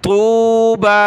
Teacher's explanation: با کو ایک الف کی مقدار اوپر کھینچیں گے